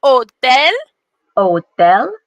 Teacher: The H in Spanish makes no sound at all. It's true. Every time you see an H, it doesn't make a sound.